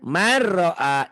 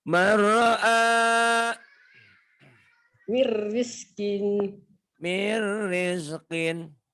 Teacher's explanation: Dileburkan, dimasukkan tapi tanpa dengung. Man jadi mar. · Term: idgham